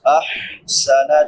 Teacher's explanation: احسن چھوٹی ہا ہے، وسط حلق سے ادا ہوتی ہے یعنی حلق کے درمیان سے جہاں سے عین ادا ہوتی ہے